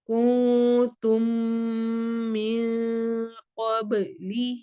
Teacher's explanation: تم میں ادغام شفوی ہو رہا ہے، میم ساکن کے بعد میم آ رہا ہے